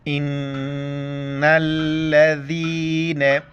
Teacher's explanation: نون کے اوپر شد، وہاں پر غنہ کرنا ہے